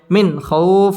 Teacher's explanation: নুন সাকিনের বামে খ আসছে খ ইজহারের হরফ গুন্না ছাড়া স্পষ্ট করে পড়তে হবে মিন খউফ খ ওয়াও জবর খও জবরের বাম পাশে জাজম ওয়াও